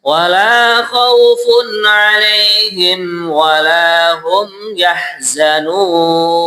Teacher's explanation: ini pengucapan wawu jangan terkesan huwa ditebalkan. Biasa mawon nggih, wa gitu.